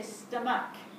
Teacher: You can't hear a ch at the end of stomach